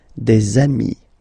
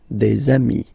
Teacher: if you make the liaison, so the link between the two, you will get des amis